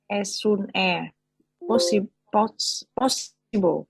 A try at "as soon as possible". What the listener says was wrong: As soon as, not long, as soon as.